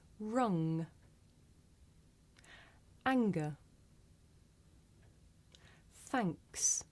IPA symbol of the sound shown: ŋ